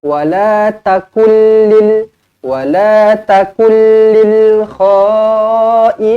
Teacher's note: nun kosong bertemu lam idgham bila gunnah, tidak dengung. Bukan wala takullil, salah.